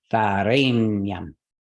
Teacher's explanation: Rain is heavy, so that will take the stress.